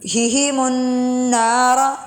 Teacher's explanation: نون پہ غنہ ہو رہا ہے اس لیے اس کو کھینچ کر پڑھا جا رہا ہے